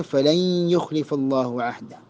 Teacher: സുക്കൂനുള്ള നൂന് ശേഷം യാ വന്നു. അൽ ഇദ്ഗാം ബിഗുന്നയാണ് നിയമം. നൂനിൻ്റെ ശബ്ദം അവിടെ ഇദ്ഗാം ചെയ്യേണ്ടതാണ്.